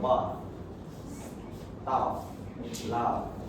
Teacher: words like bed, staff, and laugh are pronounced with a long, open A vowel